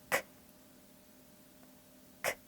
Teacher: 따라서 크 하고 힘있게 소리 내셔야 해요. 크 하고 소리 낼 때 성대가 울리지 않네요. 이렇게 성대를 울리지 않는 소리는 무성음이라고 하고요.